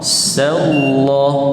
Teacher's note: sa nipis, kemudian masuk dalam kalimah lafzul jalalah Allah, tebal.